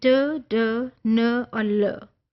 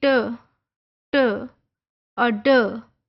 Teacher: tongue tip contact the अल्वियोलस the gums just behind the teeth